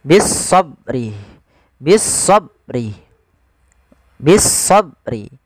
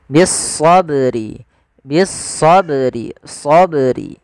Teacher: Bagaimana menambah Hamzah bisobri bisobri harusnya Qalqalah tidak tambahan Hamzah tapi bagaimana melafalkan bacaan Qalqalah itu yaitu memantul saja menyesuaikan daripada makhraj daripada huruf ba